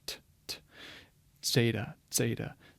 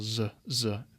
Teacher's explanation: there's a little bit more of a pop there than just a simple z